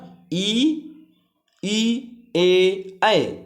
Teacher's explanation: ई ए ऐ ये आपके अग्र स्वर है। इनका उच्चारण करते समय जीभ का अग्र भाग काम आता है।